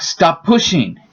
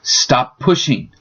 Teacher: you only say the consonant once and the space disappears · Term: linking